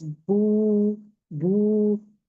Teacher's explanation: जैसे कि वाव और दम्मा के लिए हमारा जो जबान है back of the tongue raise होता है दोनों में। दूसरी चीज, दोनों के लिए होठ गोल करेंगे, स्ट्रॉ के जैसा गोल करेंगे। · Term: वाव मद